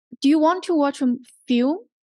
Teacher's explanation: you raised Rising intonation meaning you raised your voice right higher higher pitch you raised your voice